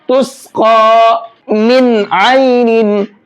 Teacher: تو اس نون کو بھی صاف صاف پڑھیں گے، اظہار کر کے پڑھیں گے۔ کنڈیشن وہی ہے جو بھی میں نے آپ کو یہاں پر بتائی ہے، فرق یہ ہے کہ یہاں پر تنوین تھی، یہاں پر نون ساکن ہے۔